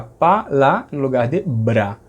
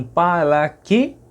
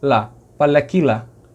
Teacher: não tem encontro consonantal, então não vai poder ser Bra, vai ser Pala. Também não tem R, né?